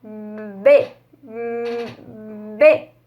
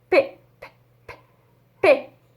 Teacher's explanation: A única diferença é que o B você começa tremendo a garganta e o P não. O P você só faz o som e em seguida você treme a garganta para fazer o som do E.